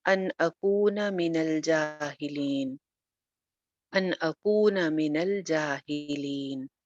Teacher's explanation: नून साकिन है, आगे हमज़ा आ गया, तो यहाँ पे इज़हार हो जाएगा, गुन्ना नहीं होगा। अन अकूना मिनल जाहिलीन, अन अकूना मिनल जाहिलीन।